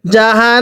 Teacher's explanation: নুনের মধ্যে আবার টান দিব না, জাহান্নাম টান দিলে পড়া শুদ্ধ হবে না